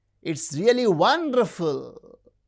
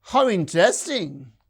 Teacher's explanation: the rise fall, it is used in very restricted context when something is highly enthusiastic or even sarcastic.